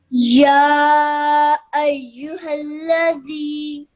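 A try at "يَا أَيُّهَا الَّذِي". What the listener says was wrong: Just try and elongate this sound for a slightly longer because of the madda saghir. Ya ayyuhalladhi. Ya ayyuhalladhi.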